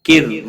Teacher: را ساکن سے پہلے زیر ہے، اس لیے را باریک پڑھیں گے